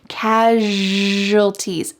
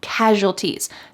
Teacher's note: The S sounds like zh.